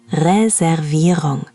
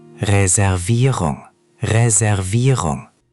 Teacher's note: Reservierung is the tricky part. The emphasis goes on the third syllable.